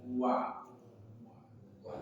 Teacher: huruf wawu yang keluar dari dua bibir yang dimonyongkan atau dibulatkan